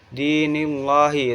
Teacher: Terus ada ayat itu qalqalah sugro. Dinillahi itu lam tarkik karena ada lafadz Allah yang sebelumnya ada harokat kasrah. Cara membacanya yaitu ditipiskan.